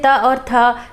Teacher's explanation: इनके बोलने में आपके जो उच्चारण तंत्रियां हैं उसमें कोई कंपन नहीं होता। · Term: अघोष वर्ण